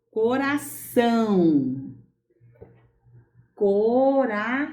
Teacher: Parte do som sai pelo nariz, parte do som sai pela boca. Ditongo nasal.